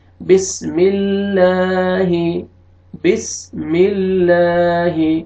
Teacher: لام سے پہلے اگر زیر آئے گی تو لام کو، اس لام کو اپنے باریک کر کے پڑھنا ہے. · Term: لام کو باریک